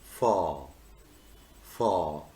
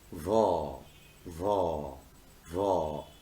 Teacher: you will not feel any vibration. But if you pronounce va, va, va, you will feel a kind of vibration.